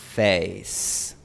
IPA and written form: 'feɪs (face)